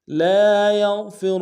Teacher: یا کو غین کے ساتھ ملانا ہے، غین کو موٹا ادا کریں گے